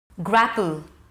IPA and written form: ˈɡrap(ə)l (GRAPPLE)